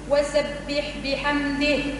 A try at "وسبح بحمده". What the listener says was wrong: مش بحمده بحمده وسبح كسرة الباء